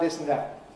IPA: ˈdɪs ən ˈdæʔ